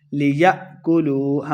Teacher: حمزہ ساکن جھٹکے کے ساتھ پڑھیں گے